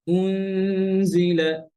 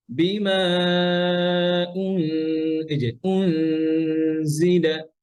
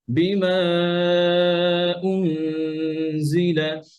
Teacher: শুধু পেশের সময় ঠোঁট গোল থাকবে, গুণনার সময় ঠোঁট গোল থাকবে না। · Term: গুন্না